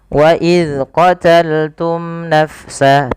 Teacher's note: Pada lafal bacaan wa idz qataltum, perlu diperhatikan di dalam melafalkan huruf zal yang berharakat sukun, jangan sampai ia memantul. Memantul. Di antaranya adalah yang memantul itu adalah huruf-huruf qalqalah, sedangkan huruf zal bukan termasuk daripada sifat huruf-huruf qalqalah. · Izhar syafawi artinya, izhar artinya jelas, syafawi berasal dari kata syafah. Berarti ia harus jelas di dalam melafalkan mimnya, tidak boleh ada penahanan.